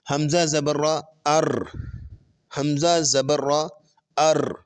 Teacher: Repetition, repeat ہونا، کہ جب آپ را کو پڑھتے ہیں تو آپ کی زبان تھوڑی سی وائبریٹ ہوتی ہے، مخرج کی جگہ پر زبان تھوڑی سی وائبریشن دیتی ہے، تھوڑی سی ہلتی ہے، اسے کہتے ہیں تکرار۔